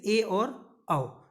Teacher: अर्धविव्रत यानी विव्रत से थोड़ा कम मुंह खुलेगा और अर्धसंवृत से थोड़ा ज़्यादा मुंह खुलेगा